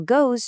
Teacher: goes just smoothly extends that vowel into a vibrating Z sound